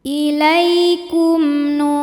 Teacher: mim sukun menghadapi huruf selain mim dan ba di sini hurufnya adalah Nun maka mim sukun dibaca jelas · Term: izhar syafawi